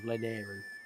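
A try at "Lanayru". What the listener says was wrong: It's not Leneru, it's Leneru. Leneru, Leneru. Where's the Nair in that? Nair. Oh, Lenheiru. Lenheiru.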